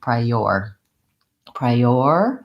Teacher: from the the I diphthong into the O rounded of or I have a little extra gliding sound that sounds like a yeah or a Y sound